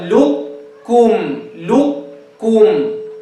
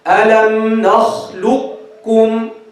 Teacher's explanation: So we merge the qaf, means the qaf is completely gone. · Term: idgham